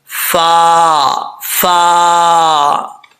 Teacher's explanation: اوپر والے دانتوں کا کنارہ نیچے والے ہونٹ کی تری والی جگہ لگے گا، یہ فا پڑھا جائے گا